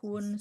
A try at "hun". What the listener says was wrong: Bukan hun tapi hen. Lagi-lagi di sini u itu dibaca hen.